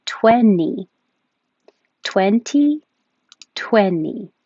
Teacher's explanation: get rid of that T and just keep the N